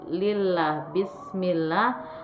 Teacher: hukum bacaannya adalah tarqiq karena lafaz Allah dibaca dengan tipis